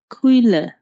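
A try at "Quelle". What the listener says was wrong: কুয়ে, এ সবসময় আপনারা সব ই উচ্চারণ করছেন, এটা কিন্তু ই না, এটা এ, সবসময় এর মতো উচ্চারণ করবেন।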